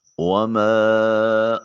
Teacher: الف کے اوپر چھوٹی مد ہے، 2 سے 3 الف کے برابر اس کو لمبا کیجئے۔